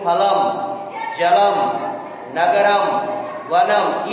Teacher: इसके लिए सूत्र है मोनुस्वारः, म का उच्चारण मुख और नासिका से मिल करके करेंगे। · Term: अनुस्वार